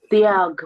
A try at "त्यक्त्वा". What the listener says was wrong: The letter V is here. You are telling me TY. I'm saying TYAK. I'm asking TV. V as in Victor.